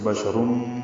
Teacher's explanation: تنوین کے بعد میم آنے کی وجہ سے بشرن ادغام ہوا غننے کے ساتھ